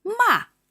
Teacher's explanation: And the fourth tone is sharply down.